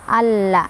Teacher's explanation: Sehingga lam yang sukunnya tidak dibaca, kita langsung baca ke lam yang kedua sambil ditekan. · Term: idgham syamsiyah